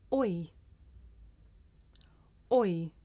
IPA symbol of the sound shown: ɔɪ